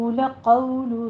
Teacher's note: क़ाफ को पुर भी पढ़ना है, वाउलीन है, दोनों होंठों को ना तमाम गोल करते हुए अदा कीजिए